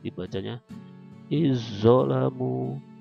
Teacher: Nah, nanti zalnya seolah-olah dihilangkan, masuk ke zo yang ditasdidkan. Contoh, iz zolamu, dibacanya izzolamu gitu, ya.